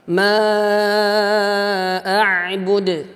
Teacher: Kemudian pada akhir kalimat ada huruf dal. Dal di sini adalah qalqalah. Ya, di sini dia dimasukkan kepada qalqalah kubra, ya, besar dia. Ma a'bud. Nah, terasa dia.